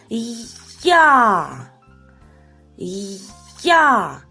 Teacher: Перший звук в нас «й», а другий звук «а». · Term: звукосполучення двох звуків